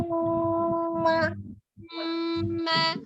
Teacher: ditahan 2 sampai 3 harokat dan suaranya masukkan ke rongga hidung ya al-khaisum.